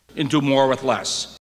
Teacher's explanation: we can occasionally hear another variety of shifted DRESS vowel, like [æ], in other words it seems to have swapped places with TRAP.